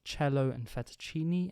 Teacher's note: ⟨c⟩ in Standard English is also pronounced /tʃ/ in mainly Italian loans such as “cello” and “fettuccine”